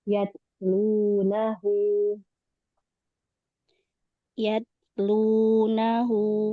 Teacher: Ta jangan mantul. Habis syiddah dia alirkan nafas. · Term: huruf ta